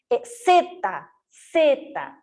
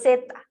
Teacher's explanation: la punta de mi lengua se apoya en el velo del paladar